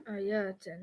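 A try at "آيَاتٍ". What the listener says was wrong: You're making it too long. Is there an alif there? Yatin. Is this a combination? Because the combination needs to be atin. So that's just straight jar. That's just easy jar.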